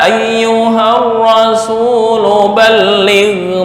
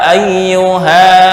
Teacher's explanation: ketika wasal alifnya menjadi hilang tapi secara penulisan dan waqaf Alif terbaca